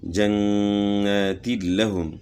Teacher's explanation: دو زیر کی تنوین کے بعد لام میں ادغام ہوا تو یہاں جو ہے ادغام بلا غنہ ہے